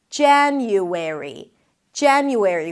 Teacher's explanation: Primary stress is on the first syllable. Even the A sound at the beginning leans towards the E, January, because there is an N right after, and the A, as in cat, before an N, changes a little bit to an A sound.